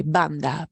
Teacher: So the B will just be pressing your lips together a little bit, really softly.